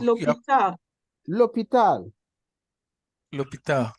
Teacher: So you can see that the L is read together with the word hospital, l'hôpital. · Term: L apostrophe